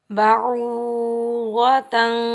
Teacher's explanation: غاد کے اوپر زبر، غاد حروف مستعلیٰ میں سے ہے، غاد کے اوپر زبر ہے تو ہم غاد کو موٹا پڑھیں گے اور بغیر کھینچے پڑھیں گے۔